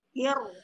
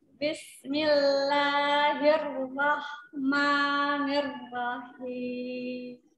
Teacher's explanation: Ketika huruf ro, punggung lidahnya ditempelkan ke gusi yang bergerigi.